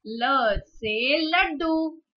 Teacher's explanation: जब हम ल प्रोनाउंस करते हैं तो हमारी जीभ दांतों को स्पर्श करती है, दांतों को टच करके जाती है, इसीलिए उसे दंत वर्ग कहा जाता है।